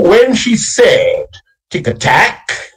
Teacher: But you have pure anapests when you come to the third and the fourth line, which go, when she said, tick-a-tack. You can hear the syllables stressing on the third element in both cases, when she said and tick-a-tack.